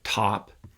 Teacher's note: just walk you through the mechanics of producing a t so with a t you uh lift up the tip of your tongue to normally make contact with the little ridge behind your upper row of teeth · there's an allophone of t called the aspirated t which is what we get in a word like top